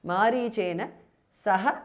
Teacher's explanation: Visarga is dropped because of sandhi.